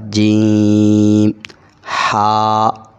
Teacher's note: اسی طرح جیم، 5 الف جتنا اس کو لمبا بھی کیا جائے اور زبان درمیان اوپر لگ رہا ہے تالوں کے ساتھ · ہا، گلے کے بالکل درمیان سے آواز آئے گی